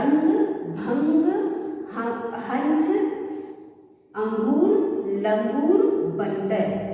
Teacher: तो बच्चों इस तरह से हम बिंदी लगा करके शब्द बनाते हैं और यह बिंदी अंग की मात्रा कहला जाती है। और जब भी हम इन शब्दों को पढ़ते हैं तो जो हमारी ध्वनि है वो हमारी नाक से भी आती है और मुंह से भी आता है